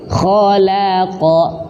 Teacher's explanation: Kha itu tebal, lam itu tipis, qaf itu tebal. Maka huruf lam yang di tengah-tengah huruf tebal jangan sampai terbawa tebal.